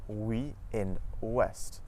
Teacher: OU at the start of the syllable makes a W sound, just like in the words woman and west.